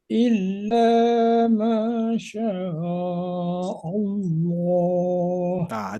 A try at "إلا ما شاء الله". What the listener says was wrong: Jadi pengucapan harokatnya diperjelas lagi. Illa ma syaa. Tidak illa ma Allah. Makanya agak dibuka saja Pak, lepas.